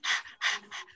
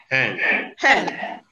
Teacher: There is no obstruction anywhere. It is pronounced at the open glottis within the mouth. Your mouth will be open and then you push out air. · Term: glottal fricative